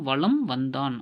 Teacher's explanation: மகர மெய்யெழுத்து அடுத்து வகர எழுத்து வருவதால் மகர மெய்யானது தனக்குரிய அரை மாத்திரை அளவிலிருந்து 1/4 மாத்திரை அளவில் ஒலிக்கிறது. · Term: மகர குறுக்கம்